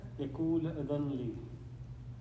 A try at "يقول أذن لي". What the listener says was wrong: You're not saying the dhamma. The first one was wrong.